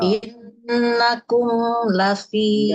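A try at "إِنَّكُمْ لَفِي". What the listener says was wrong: Na-nya nggak panjang. Jadi yang panjang di tekanannya. Innakum. Ya, ingat ya. Ini nanya itu kan nggak ini nih di ayat kelima innama. Nah, nanya kan nggak mad, nggak panjang. Jadi langsung innama. Nah, kalau misalkan ada nun bertasdid, kecuali nunnya mat. Misalnya habis nun bertasdid matobi'i, baru inna.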